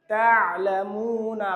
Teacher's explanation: এই আইনটা হলকের মধ্যখান থেকে উচ্চারণ হয়